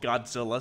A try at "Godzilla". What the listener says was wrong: You said Scylla, like with a C. Godzilla.